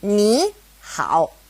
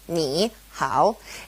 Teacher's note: hard huh well when to third tones are side by side the first one becomes a second tone like this me how it's easier isn't it so just remember